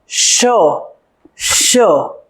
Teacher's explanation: એમાં તાળવા સાથે જ્યારે હવા ઘર્ષણ અનુભવે ત્યારે શ નીકળે છે. હવા મૂર્ધા સાથે ઘર્ષણ અનુભવે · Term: મૂર્ધન્ય સંઘર્ષ